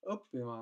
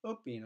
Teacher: õppima on kolmas välde, õpin on teine välde